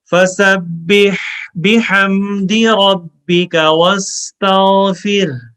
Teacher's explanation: را کو موٹی آواز میں پڑھیں گے چونکہ را پہ زبر ہے